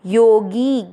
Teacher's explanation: गी की मात्रा बड़ी लंबा खींचना है